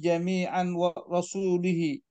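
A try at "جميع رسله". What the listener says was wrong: Jami'a rusuli, kalau rasul pakai waw.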